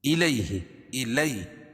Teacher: الی یا ساکن سے پہلے زبر ہو تو یا لین اس کو نرم آواز کے ساتھ جلدی پڑھیں گے